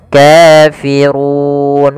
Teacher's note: pada lafal ru di sini ra tebal, yaitu ra tafkhim. Ra-nya dibaca dengan tebal.